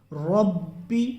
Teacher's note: منہ بھر کے اس کو پر کر کے پڑھنا ہے، کیونکہ را کو پر کر کے پڑھا جاتا ہے